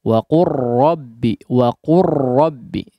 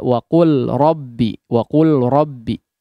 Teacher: secara makhraj antara huruf lam dengan huruf ra dia berdekatan, sehingga diidghamkan adalah cara yang paling mudah untuk mengucapkannya · Jadi tidak perlu lagi mengeluarkan huruf lam. Lamnya diidghamkan, dimasukkan kepada huruf ra. Ya. Tidak waqul rabbi, waqul rabbi.